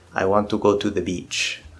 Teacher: You can see I'm making all the syllables about the same length. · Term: syllable timing